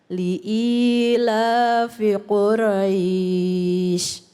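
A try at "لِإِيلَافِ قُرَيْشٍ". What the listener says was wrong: Ya, jadi ro ya Bu ya, nggak ada ra. Jangan Quraisy, tapi ro. Quraisy.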